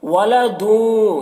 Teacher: تنوین کے بعد واو ہے حروف یومن میں سے، تو یہاں پر ادغام ناقص ہوگا، اسے غنہ کے ساتھ میں پڑھیں گے